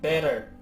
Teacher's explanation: 。その3、英語ができる方向けの手法2種類です。こちらは英語ネイティブ向けの手法となります。さらっと説明しますが、better▁や▁through▁が発音できない場合は発音練習のパートまで飛ばしてもらって構いません。手法1、ダウン音化した▁T▁や▁D▁を連続して発音する。アメリカ英語やカナダ英語では母音に挟まれた▁T▁や▁D▁は▁R▁音化します。 一般的にはダウン音化と呼ばれ、アメリカ英語話者は▁D▁の音として認識します